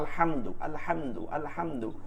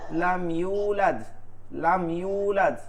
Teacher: মিম সাকিনকে গুন্না ছাড়া স্পষ্ট করে পড়তে হয় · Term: ইজহার